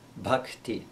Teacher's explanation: the aspirated ba sound as in the sanskrit word bhakti